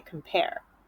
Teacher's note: and compare, you're emphasizing the second part of the word. So I put the stress symbol above pair, compare.